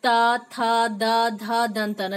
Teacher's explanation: जब इसका प्रयोग करते त तो क्या होता है, दांत, दांत का प्रयोग होता है, इसलिए तवर्ग का उच्चारण स्थान दंतव्य या दांत है।